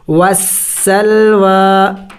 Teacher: وسل، واو کڑی زبر وا، وسلوا، واو کو جلدی نہیں پڑھیں گے، اس کے اوپر کڑی زبر ہے، کڑی زبر کو ایک الف کے مقدار کھینچنا ہوتا ہے۔